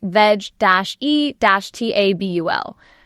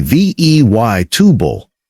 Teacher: That middle E drops out completely. The trick, a vegetable is not a vegetable, it's a vegable.